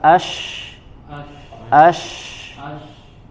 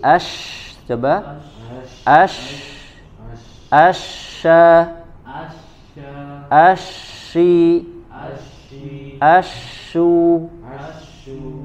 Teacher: udaranya menabrak ke bagian gusi gigi seri atas dan bawah ya tetap dengan ada udara yang keluar kemudian itu kembalik lagi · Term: sifat tafasyi